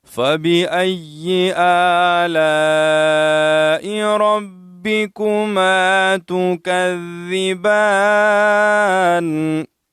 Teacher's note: با مشددہ ہے تو اس کو ہم سختی سے ادا کریں گے، شد ادا کریں گے.